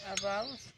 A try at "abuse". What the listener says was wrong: अरे बाऊ कहाँ बोले तो व्यू गलत। मात्रा ना लगा।